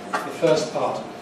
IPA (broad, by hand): ðə ˈfɜːs ˈpɑːt